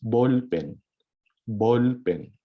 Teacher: So emphasize every syllable to make it Filipino, to make it sound like Filipino word.